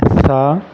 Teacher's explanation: زبان کا سرا اوپر والے دانتوں کے ساتھ لگائیں گے تو اس کی آواز نکلے گی